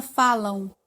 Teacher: esse m aí é como se estivesse falando a semivogal w